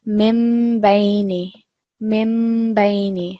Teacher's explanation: So we call this meme makluba, and you just have to remember that that small meme will substitute the sound of either the noon sakin or the tanveen. So we'll be pronouncing the meme instead. So the other thing also to remember is that we're going to make a small pause for, say, about 2 seconds when we're reading it.